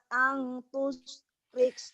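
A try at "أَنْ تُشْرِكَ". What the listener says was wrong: Shinnya mana? Tush.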